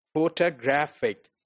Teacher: if you look at this word photographic the actual stress is on graphic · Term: primary stress